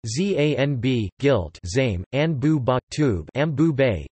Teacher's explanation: Often, the sequence of /nb/ assimilates to [mb]. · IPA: [zæmb]